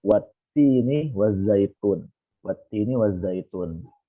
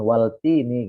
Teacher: Lamnya kan dia diidghamkan di huruf ta. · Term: alif lam syamsiyah